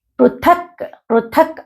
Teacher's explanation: అంగిడితో వస్తుంది ఆ సౌండ్ అనేది షంఖాన్ అని రావాలి దద్ము పృథక్ ప్రథక్ థ అనేది మహా ప్రాణాక్షరము కాబట్టి ఒత్తి పలకాలి